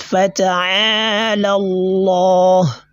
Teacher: the heavy pronunciation of this lam in the word of majesty is known as a at-tafkhim